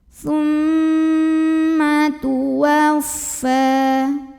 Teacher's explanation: Cara bacanya dengung, bunyi M-nya tahan sampai ada getaran halus ke hidung. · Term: gunnah musyaddadah